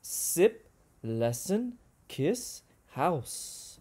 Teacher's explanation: when you touch your throat and you say sip you should not feel your throat vibrate · it's a fricative we push air out slowly and it's voiceless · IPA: /s/